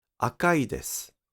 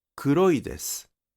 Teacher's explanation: The pitch drops over i desu.